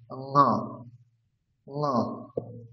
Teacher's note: যেরকম ক বর্গের উচ্চারণ হচ্ছে কন্ঠ। তাহলে ক বর্গের যে নাসিক বর্ণ ন সেটার উচ্চারণ হবে কন্ঠের সাথে সাথে নাকে